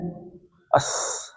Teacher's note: سین میں سیٹی ہے، اس، اور پتلا ہے، پتلا ہے اور سیٹی ہے